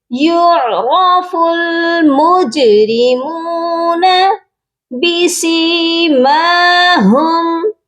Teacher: ہاں کی آواز سینے والے حلق سے آئے گی اور اس میم پر غنہ نہیں کیا جائے گا۔